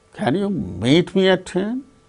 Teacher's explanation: the rising tone is on meet.